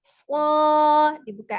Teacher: Secara makhraj, ujung lidahnya di antara gigi seri atas dan bawah ya. Ada sifat as-sofir desisnya.